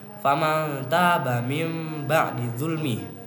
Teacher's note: Oleh karena itu, hukum membaca iqlab adalah menukar atau mengganti nun mati atau tanwin menjadi huruf mim mati dengan disertai dengungan